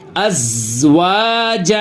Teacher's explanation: زا پہ سکون ہے لیکن زا کے اوپر ہم قلقلہ نہیں کریں گے